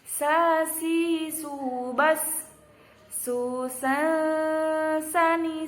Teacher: Sin mendesis, meringis. Sin, sa mendesis, meringis, dan bersih. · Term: huruf sin